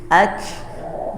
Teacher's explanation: Ya, didorong dengan hembusan nafas. Sisakan sedikit rongga untuk keluar nafas. Jadi bunyinya seperti bisik-bisik gitu ya. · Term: hams